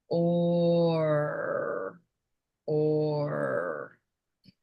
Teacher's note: Notice that there's movement because you're making the O and then you need to move for the R. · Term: or sound